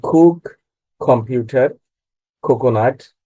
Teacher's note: ক ইংলিশ অ্যালফাবেটের প্রথম উচ্চারিত হলে এই ক টা খ হয়ে যায়